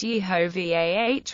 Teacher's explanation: the name is really pronounced Yehovah with the emphasis on Vah